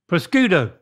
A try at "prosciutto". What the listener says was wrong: Good. That's right. All right. You still got it.